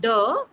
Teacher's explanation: there is vibration of vocal folds, because of which it is considered to be a voiced consonant. So when this is a voiced consonant, that is why you can see the voicing here.